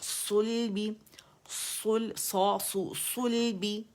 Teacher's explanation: صا موٹا ہے لام باریک ہے